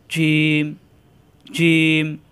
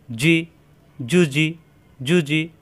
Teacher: জিম জিহ্বার মাঝখান উপরে তালুতে চাপ দিয়ে শক্ত করে উচ্চারণ করতে হয়